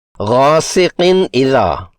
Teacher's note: نون کی آواز کو ظاہر کر کے 1 حرکت کی مقدار میں پڑھیں گے، یعنی اظہار کریں گے۔